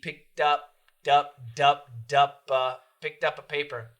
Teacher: this word alone is picked but when we link almost always we change it back to a d